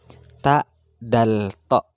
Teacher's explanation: Itu tempat keluarnya tak, sama dengan tak, dal, to. Ada di ujung lidah dengan pangkal 2 buah gigi bagian atas.